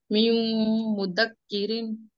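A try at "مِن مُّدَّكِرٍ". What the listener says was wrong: दाल मुशद्दद है यहाँ पे, यानी तशदीद वाला है, 2 मरतबा पढ़ा जाएगा। रिन। मैं पढ़ के बताऊं, शायद ऐसा पढ़ना होगा उसको। मिम मुद्दकिरिन। बराबर ना, ऐसे ही पढ़ना है ना? मुद्दकिरिन।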